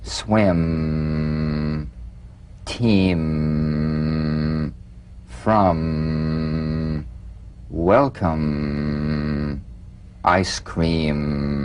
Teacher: the m is a nasal labial consonant made with the lips to feel the M simply allow your lips to meet very